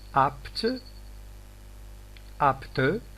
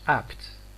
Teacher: phase 1 of t comes after phase 2 of p is completed, and phase 3 has started. There is no overlapping of the closure phases.